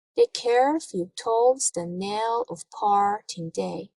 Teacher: in each foot or in each unit there is an unstressed syllable followed by a stressed syllable the is unstressed care is stressed so the the few toes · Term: iambic foot